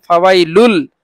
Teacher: ইদগামে বেলাগুন্না, মানে গুন্না ছাড়া মিলাইয়া পড়তে হয় । এই যে বললাম ফাওয়াইলুল, এই যে লুল পড়লাম, লামের সাথে